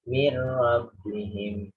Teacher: Ini yang ra ya. Tidak min, tapi mir.